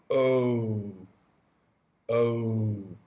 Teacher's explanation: the O sound you have quite tight lips oh so I'm making it a round shape with my lips and it's not relaxed it's quite tense it's quite tight oh oh so your tongue in the middle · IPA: /əʊ/